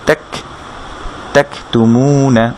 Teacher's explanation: কাফ যখন আমরা বলছি ত্যাক, হালকা একটা বাতাস বেরোচ্ছে